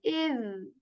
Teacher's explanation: This is like iz. So the tip of our tongue touches the tip of our upper teeth very softly